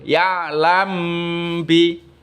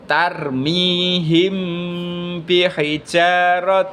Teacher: cara membacanya yaitu samar-samar antara mim dan ba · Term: Ikhfa Syafawi